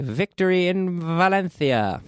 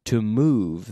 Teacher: It doesn't sound like the B in English. It sounds like an F with a vocal cord activated.